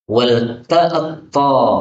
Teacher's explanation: Ini ta ketemu dengan ta, ini bisa dibaca dengan idgham. Wal ta'ta, karena ta-nya hapus menjadi ta ya, maka wal ta'ta.